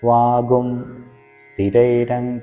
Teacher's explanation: പിന്നീട് തിരൈരങ്കൈസ് വാഗം സസ്തനോപിഹി അവിടെ സന്ധി സന്ധിയിൽ വാഗും സ്ഥിരൈരംഗൈസ്തുഷ്ടവാകും സസ്തനോപിഹി എന്നുള്ളിടത്ത് അനുസ്വാരത്തിന്റെ പരമായിട്ട് സ വരുമ്പോൾ ഗും എന്നുള്ള ഒരു ഉച്ചാരണം ആയിരിക്കും